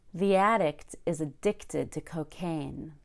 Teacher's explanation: addict is a noun and stressed on the first syllable but addicted is a verb and stressed on the second syllable